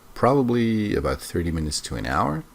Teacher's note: his voice rises here to show uncertainty